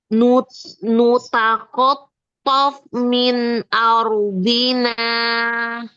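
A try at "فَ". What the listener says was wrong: Fa-nya lebih basah lagi ya. Tof min. Ini PR ya, fa-nya ya.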